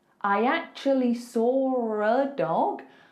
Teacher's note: I can't see an R, but I said an R.